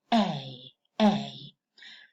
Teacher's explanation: the tongue glides from the position of the dress, towards the position of the kid.